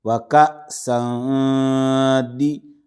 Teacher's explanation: و کا، سین دو زبر سن، و کا سن، دال زیر دی، تنوین کے بعد دال ہے، بغیر تشدید والا حرف ہے، اخفا ہوگا